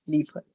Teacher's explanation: the R sound is weird. It just comes from the back of your throat, as if you're like clearing your throat almost.